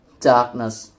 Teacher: The word darkness is formed from the adjective dark and the suffix ness, and it serves as another example of a stress-preserving suffix. The base word dark has stress on its only syllable, and when ness is added, the stress remains on the same syllable, producing darkness.